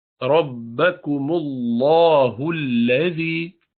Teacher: इन्न रब्बकुमुल्लाहुल्लज़ी, रब्बकुमुल, अल्लाह का लाम जो है लफ्ज़ अल्लाह का उससे पहले पेश है, उसको फुल पढ़ेंगे, भारी पढ़ेंगे, उसको लाम जलाला है।